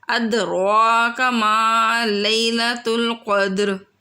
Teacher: وما ادراک، اد دال کو قلقلہ کرنا ہے، را کو بھی موٹا بولنا ہے۔ ادراک ما لیلۃ القدر، ٹھیک ہے۔